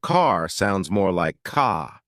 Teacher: British accent tends to soften the R